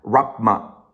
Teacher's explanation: So you pronounce the M, but not the P, right? They are both bilabial. Wrap my head around.